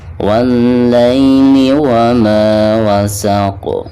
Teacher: Wa ma wasaq, ketika diwakafkan maka di sini ada pantulan huruf qaf ya, dan termasuk qalqalah kubra di sini ya, karena qaf sukun tersebut itu karena wakaf ya, bukan asalnya.